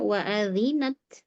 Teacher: Wa adhi, dzalnya dialirkan suaranya.